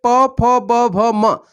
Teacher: जब हम बोलते हैं तो हमारे दोनों होठ का यूज होता है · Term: ओष्ठ